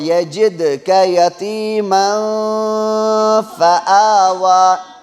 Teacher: یہاں تنوین کے بعد یہاں فا حروف اخفا میں سے ہے، اس لیے یہاں پر اخفا ہوگا، اخفاء حقیقی۔